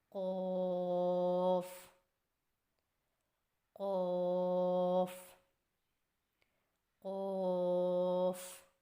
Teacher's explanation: قوف کی ادائیگی میں زبان کی جڑ کو کوے کے متصل تالو پر لگا کر موٹی آواز میں پڑھیں